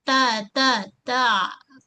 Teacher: Hujung lidah menyentuh pada belakang pangkal gigi kacip atas tempat gigi tumbuh ni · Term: huruf ta